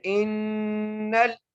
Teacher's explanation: حمزہ کو نون سے ملائیں گے اور نون پر ہم غنہ کریں گے. آگے پھر نون کو لام سے ملائیں گے.